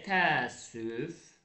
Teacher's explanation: Təəssüflə qoşa saitlərdən biri tələffüz olunmadı. Ə tələffüz olunmadı və səslər də hərflərin sayı bərabərdir.